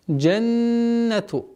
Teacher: Удержание назализации в размере двух огласовок.